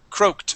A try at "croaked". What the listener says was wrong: with a T ending. You're saying craw, croaked. It is crow, croaked.